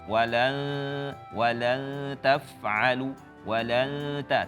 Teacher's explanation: di makhraj ta langsung ya, jangan ke nun dulu, langsung ke makhraj ta